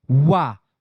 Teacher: व बोलेंगे तो दंत और ओष्ठ दोनों से मिलेगा। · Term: दंतोष् व्यंजन, दंतोष्ठ व्यंजन